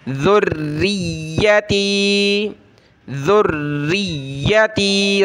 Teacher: ذال را پیش ذر را یا زیر یا زبر یا ذریہ، را کے نیچے زیر آ جائے تو را کو پتلا کر کے باریک کر کے پڑھیں گے۔ ذریتی، ذریتی، را اور یا دونوں کو سخت کریں۔